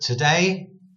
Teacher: Today, da-dun, da-dun, da-dun. One word, today, the emphasis is on day because the two part isn't so important.